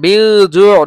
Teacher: নুন সাকিনের পরে জিম আসছে, এটা হলো ইখফা। ইখফার 15টি হরফ থেকে একটি আসছে ইখফা, গুণা হবে এটা।